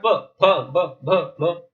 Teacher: ये होठों का स्पर्श करते हैं